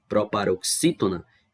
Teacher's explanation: ela é uma palavra que tem a antepenúltima sílaba mais forte